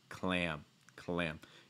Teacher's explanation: this is a light L sound when you say clam. So the tip of your tongue should make contact with the top of your mouth.